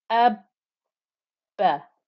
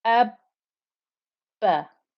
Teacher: I did two bas, one after the other, but I didn't open my lips from having said the first ba.